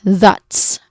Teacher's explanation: So it starts with a voice th sound.